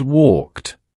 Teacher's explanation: Your vocal cords are off for the last sound of the verb and they stay off for the past tense ending. It's a seamless transition of voicelessness.